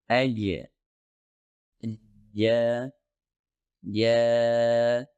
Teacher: jim dihasilkan ketika bagian tengah lidah terangkat dan membuat kontak dengan langit-langit keras perlu diingat bahwa dua organ yaitu lidah dan langit-langit keras harus